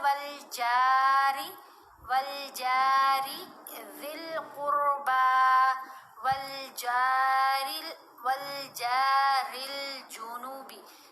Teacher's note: جب آپ دیکھیں کہ سادہ زبر زیر یا پیش ہو اور ساتھ کوئی اضافی وول حروف مدہ نہ ہو تو ہم نے بالکل چھوٹی آواز پڑھنی ہے، شارٹ ساؤنڈ بنے گی، تھوڑا سا بھی نہیں کھینچنا. را کے نیچے زیر ہے تو اس لیے را کی آواز کو باریک پڑھا جائے گا، را کو موٹا نہیں پڑھنا